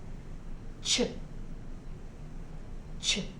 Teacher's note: The CH digraph says ch, ch. Notice how my lips go out when I say the CH digraph.